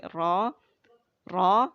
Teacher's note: Jadi tidak terlalu bergetar juga gitu ya. Yang penting ada getaran sedikitnya itu huruf ro.